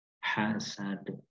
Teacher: Kita pantulkan karena huruf dal apabila di akhir ayat atau di pertengahan ayat dalam keadaan sukun, maka kita harus memantulkan huruf itu karena disebut dengan qalqalah di dalam ilmu tajwid.